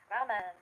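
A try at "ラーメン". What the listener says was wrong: It's not a man, it's a men.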